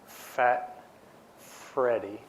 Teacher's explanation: But if you say Fat Freddy, only when we get to the vowel part does it actually get the vibration. So the F part is just airflow through the mouth, and it's just articulation with the tongue and the lips that produces that sound.